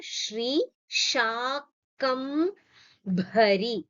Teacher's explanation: So this here, if you see, you have one Mahaprana, Shri Shakam Bhari. The Bha is supposed to be a Mahaprana.